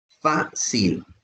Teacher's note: Fa es la sílaba tónica y va acentuada porque es la penúltima y termina en consonante. · Fácil termina en consonante. Su sílaba tónica es la penúltima